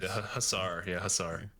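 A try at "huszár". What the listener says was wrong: There's a Z in there. You got to pronounce the Z. It's Huziar.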